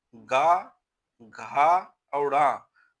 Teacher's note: का वर्ग में गा घा और ड़ा घोष व्यंजन हैं